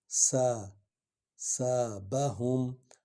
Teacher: سین سیٹی کی آواز نکلے گی